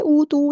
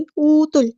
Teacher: تا کو ہم نے فوراً لام کے ساتھ ملا دینا ہے